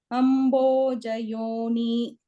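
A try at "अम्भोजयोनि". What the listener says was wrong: Not dirgha, no dirgha is there. Ambhojayoni rasrujat. Not Ambhojayoni rasrujat. Yon still. Ambhojayoni rasrujat.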